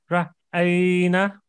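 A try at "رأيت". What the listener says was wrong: No, it's a last letter is ta. No, aita.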